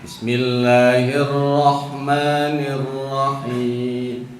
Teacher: Jangan dimonyongin bibirnya ketika sebab ra bukan ro.